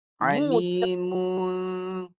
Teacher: Mu tu jaga jangan masuk hidung. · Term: dua bunyi